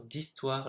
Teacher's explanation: Now, please note that it's D apostrophe in French because histoire, even if it starts with a H, you don't pronounce the H. So it starts with an I, so it's a vowel.